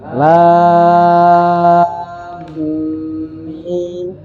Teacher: Nah, ini sama, yang dipanjangkan la-nya dulu. La-nya ini 6 harokat dulu, jangan ke mimnya. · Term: mat lazim harfi mutsaqqal